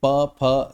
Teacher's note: हमारे दोनों ओष्ठ कार्य करते हैं प फ ब भ को बोलने में और हमारे दोनों जो ओष्ठ हैं वो आपस में टकराते हैं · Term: ओष्ीय